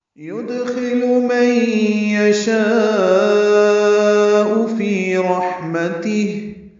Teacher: یدخل میں دال ساکن پہ قلقلہ، خا پر لام باریک، اور اس کو جلدی پڑھنا ہے